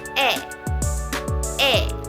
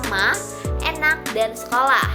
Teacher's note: lidah berada di depan mulut sedikit lebih rendah dari I dan bibir tetap tidak dibulatkan. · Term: vokal depan